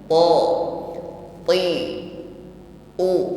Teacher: Tekanan pada huruf ta ini kuat, bukan diucapkan dengan lemah, tidak ada nafas yang berhembus ketika mengucapkannya. Ti, ya, bukan nuti, ya, tapi nuti.